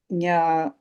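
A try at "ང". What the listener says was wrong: When you are saying nga, you are touching your tongue on the upper mouth. Don't touch it. Leave the tongue down there and say nga from the throat. Nga, like this.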